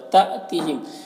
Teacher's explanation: تأتیہم یہاں پر الف کے اوپر جزم ہے تو یہ حمزہ ساکنہ ہوا، اسے جھٹکا لگا کر پڑھیں گے